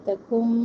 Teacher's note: نون ساکن کے بعد میم ادغام کر رہے ہیں غنہ کے ساتھ